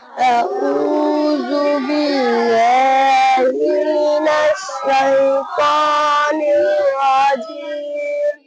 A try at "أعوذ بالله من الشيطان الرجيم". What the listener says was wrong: আইন ভালো উচ্চারণ করতে হবে। আউযু আউযু আ হামজা জবর আ আইন ওয়াপস উ আউ আউ এরম যেন না হয়ে যায়। আউ আউ আউ আউ আউ